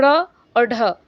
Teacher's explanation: ड़ और ढ, हमारा जीभ जो है वो उल्टा हो जाता है ना, मुड़ जाता है, और ये क्या हो जाता है, वायु को बाहर की तरफ फेंकती है। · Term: उत्क्षिप्त व्यंजन